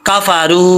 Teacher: रा के आगे वाव है, वाव मद्दा, इसको लंबा करेंगे